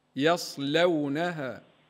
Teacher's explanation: رقق اللام من قوله تعالى يصلونها قالون يقرا بالترقيق